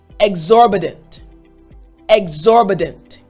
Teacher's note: in this word exorbitant, the T actually sounds like a D.